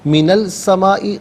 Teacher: من السمائی جب ملا کر پڑھیں گے تو نون پر زبر ہوگا، اس سے السمائی کے سین کے ساتھ ملائیں گے، درمیان میں سے الف یعنی حمزہ کو حذف کیا جائے گا۔ یہاں سین حرف شمسیہ ہے، لام کی آواز نہیں بلکہ سین کی آواز کو ادا کیا جائے گا